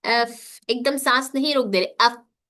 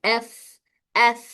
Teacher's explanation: इसमें air flow यानी सांस जारी रहता है